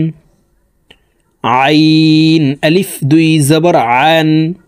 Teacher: আইন হরুফকে হালকের মধ্যখান থেকে চাপ দিয়ে উচ্চারণ করব কারণ আইনের মাখরাজ হালকের মধ্যখান থেকে হবে আইন আলিফ দুই জবর